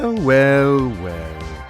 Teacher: There's a vocal fry there.